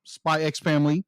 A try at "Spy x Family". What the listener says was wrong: the x is silent